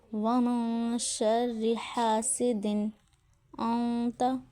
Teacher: نون کے بعد آنے والے حرف کے مخرج کے بہت قریب جایا جاتا ہے. آواز تھوڑی منہ زیادہ ناک سے نکلتی ہے. 2 حرکات 2 کاؤنٹ کا غنہ ہوتا ہے. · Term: اخفا